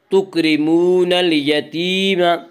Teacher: تکرمون، واو مدہ، واو مدہ وہ واو جو ساکن ہو اس سے پہلے پیش ہو، واو مدہ کو ایک الف کے برابر کھینچ کر پڑھیں گے